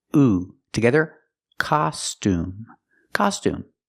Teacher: the U has the oo sound like room and food.